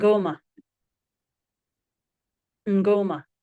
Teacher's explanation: So rather than a m orn mn when the m or the n is followed by another consonant it is nasal m. So there is no vowel inserted between these two consonants.